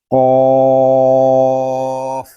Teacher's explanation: یہ قاف زبان کی جڑ اور تالو کے نرم حصے سے ادا ہوتا ہے، یعنی حلق کے درمیان جو گوشت کا چھوٹا سا ٹکڑا لٹک رہا ہے اس سے ٹکرا کر اس کی آواز نکلے گی، قاف۔